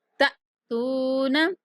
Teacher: حمزہ ساکن ہے تو ہم جھٹکے کی آواز کے ساتھ پڑھیں گے